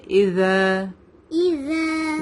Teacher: tip of the tongue touch the lower part of upper front teeth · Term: ذال